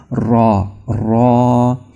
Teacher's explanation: را کی جو آواز ہے یہ زبان کے اگلے کنارے کو تالوں کے اس حصے سے مس کرنے سے پیدا ہوتی ہے جو اوپر کے دانتوں سے جڑا ہوا ہے، یعنی جو اوپر کے دانتوں کے ساتھ تالو ہے نا، تو اس کے ساتھ جب آپ اپنی زبان کو ٹکرائیں گے، رگڑیں گے تو را، را۔